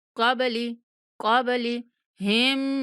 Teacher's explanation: کاف کو موٹا پڑھنا ہے، با پر قلقلہ کرنا ہے